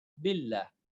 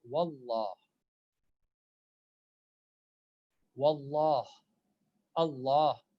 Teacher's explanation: Billah is light, billah. But if I say wallah, wallah, Allah, these are all heavy.